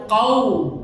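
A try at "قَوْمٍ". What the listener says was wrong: Bukan kau, itu tipis kau, tapi kau. Nah, ini kof ya, bukan kaf ya. Nah, jadi pangkal lidahnya terangkat.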